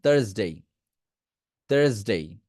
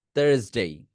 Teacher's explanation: লাস্টের এসটাকে জয়ের মতো সাউন্ড করবেন